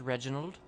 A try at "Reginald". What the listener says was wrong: It's Reginald. You've got to roll the R, boy.